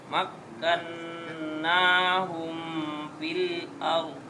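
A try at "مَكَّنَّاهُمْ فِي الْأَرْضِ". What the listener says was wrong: belum ada anginnya lagi. Fi. Ada anginnya. Ada angin pokoknya ada anginnya. Fi bunyinya walaupun sini. Fi. Fi. Tapi kalau yang Indonesia pi. Pi. Pil ard. Tapi kalau orang Arab tuh walaupun sedikit fil, tetap ada anginnya.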